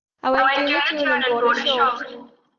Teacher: en lugar de town, vamos a tener tun. Se elimina el diptongo.